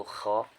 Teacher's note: alif lam bertemu dengan salah satu huruf qamariyah yaitu kha, ketika dibaca huruf lamnya jadi tampak atau terbaca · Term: alif lam qamariyah